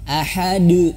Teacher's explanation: harus sesuai dengan sifatnya Nah apa Huruf Dal itu sifatnya nah huruf Dal itu sifatnya dia tipis ya istifal kalau dalam bahasa Tahsin istifal namanya itu tipis ya menurunkan pangkal lidah jadi dia tidak tebal · kita coba fokuskan ke huruf Dal Dal di sini adalah Qalqalah Nah maka harus pantulkan